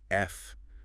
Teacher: top teeth resting gently on your bottom lip and you push air through. F. We call this a fricative.